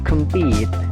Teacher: jadi pitnya itu ditekan, kemnya itu kan dibaca pecel ya, kem ya, jadi singkat, kemnya singkat, compete, pitnya itu ditekankan.